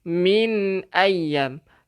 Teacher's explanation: Nun mati ada tanda mati, hukumnya izhar halqi. Kita kena jelaskan bacaannya.